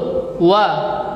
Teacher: Jadi cara penyebutannya dimonyong dulu, wa. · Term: huruf waw